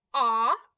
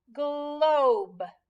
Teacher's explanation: hearing the difference between the short o ah and the long o o